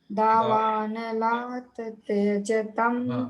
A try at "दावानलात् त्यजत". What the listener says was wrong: दावानलात त्यजत, ये जो दावानल का त है ना अंत में, ये आधा है, तो इसको दोनों को जोड़ के बोलना है। दावानलात त्यजत, ऐसा जोड़ के बोलना है।